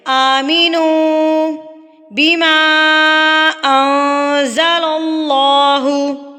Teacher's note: واؤ مدہ ہے۔ تو اس کو ہم کتنا کھینچیں گے؟ ایک حرکت کے برابر۔ · اخفا یعنی کہ نون کی آواز کو ناک میں چھپانا